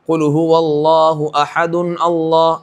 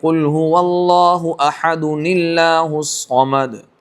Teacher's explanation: نون قطنی کا قاعدہ اس کے مطابق پڑھنا پڑے گا، اور حمزہ وہ وصلی ہوتا ہے تو حمزہ وہاں سے گر جائے گا